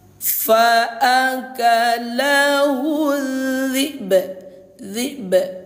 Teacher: sukunkan atau matikan dulu hamzahnya baru qalqalahkan huruf ba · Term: qalqalah kubro